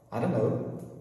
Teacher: E o T sumiu completamente. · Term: Drop T